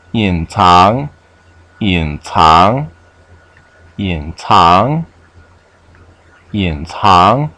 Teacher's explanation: Third tone, second tone.